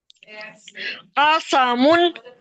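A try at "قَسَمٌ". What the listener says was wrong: قوف کو موٹا بنائیں. قو قو قوسا. قوسا. قوسم. قوسم.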